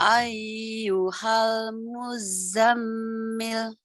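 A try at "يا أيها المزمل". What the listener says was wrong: Kok ayyuhal? Ya, jangan dibaca. Ya ayyuhal muzammil.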